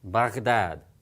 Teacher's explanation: Now, as I said, the ghayn sound has sort of a combination of a G and an R sound together.